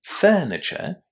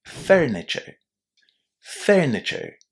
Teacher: because my accent is British I don't pronounce the letter R